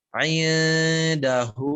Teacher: di indahu tadi jangan dibaca in ke huruf nun tapi dia samar ke ikhfa